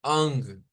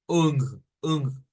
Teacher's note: nasalizada, o sea que la hacemos más con la nariz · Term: sonidos nasalizados